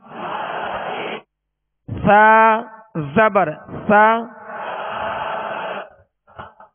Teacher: اور مخارج کی لسٹ میں جب سا یا مخرج آپ دیکھیں گے تو اس کی ادائیگی جو ہے زبان کا سرا اور اوپر کے جو سامنے والے دو دانت ہیں اس کے اندرونی کنارے سے لگے تو سا ادا ہوتا ہے